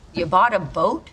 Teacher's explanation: notice how her intonation Rises at the end